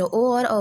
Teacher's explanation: ओ और औ का स्थान कंठ और ओष्ठ होता है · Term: कंठोष्ठ